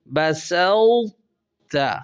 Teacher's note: اب یہاں سین کے بعد تو پر بریک لگانی ہے اور زبان کا درمیان اوپر کے تالو کو لپیٹ لے اور بغیر قلقلہ کیے ہوئے تا ادا کرنا ہے، جیسے پھر بول رہا ہوں بسوت، یعنی سین کو صاد نہیں بننے دینا، سین ہی رہے اور تو میں آپ کی زبان اوپر کے تالو کو لپیٹے اور تا میں تشدید کو ظاہر کرنا ہے تاکہ ادغام کی صفت بھی واضح ہو جائے۔ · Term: ادغام متجانسین ناقص